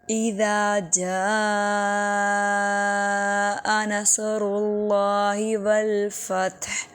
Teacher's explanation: جاء پہ بڑی مد ہے، اس کو 5 الف کے برابر لمبا کریں گے